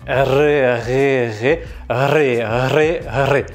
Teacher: il va falloir prononcer le R en faisant vibrer ta langue et non ta gorge. Si tu utilises ta gorge pour créer le R, le son sera plat et il te sera impossible de le faire vibrer. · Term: R roulé